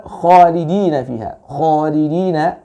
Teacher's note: kha itu kurang terbaca dengan tebal ya, kurang terbaca dengan tafkhim, karena huruf kha ini adalah huruf isti'la